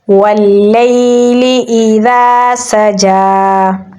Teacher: سین میں سیٹی کی آواز دیں گے، جیم پہ کھڑی زبر ہے تو اسے ہم لمبا پڑھیں گے، تو پڑھا جائے گا واللیل اذا سجا۔